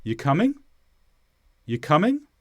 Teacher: The tone of my voice went up. Rising intonation. So the question is signalled by my intonation, not necessarily the words.